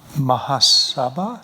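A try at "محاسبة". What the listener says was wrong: The accent's on the wrong part.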